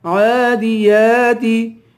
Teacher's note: یا پہ بھی کھڑا زبر ہے، اسے بھی ایک الف کے برابر کھینچ کے پڑھیں گے